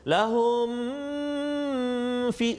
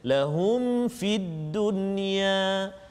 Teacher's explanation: Dan juga satu lagi pada kalimah lahum fid dunya, juga ayat 114, lahum fid dunya tu mim mati bertemu dengan fa, izhar syafawi, jadi kita tak boleh dengung kat situ